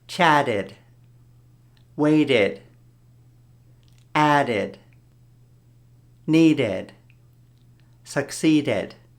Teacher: it's like an extra syllable where you go ed